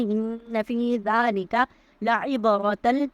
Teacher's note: لعب عین کی آواز کو ہم حلق سے ادا کریں گے